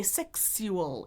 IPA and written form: ˈsɛks yu əl (sexual)